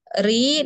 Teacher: ro-nya yang dibaca tipis karena berharokat kasroh. Tarkik ya.